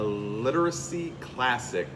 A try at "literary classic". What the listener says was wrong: Literacy classic? Literary classic. you said literacy.